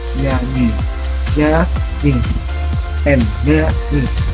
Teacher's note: artikulasi dorsopalatal, pangkal lidah dan langit-langit keras, contohnya seperti kata nyanyi, nyanyi, nyanyi.